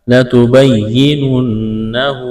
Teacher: نون مشدد ہے، آواز ناک میں چھپائیں گے، غنہ کریں گے۔